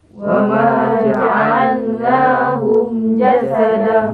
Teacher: Bacanya jangan dengung, ya. Mim itu terangkan.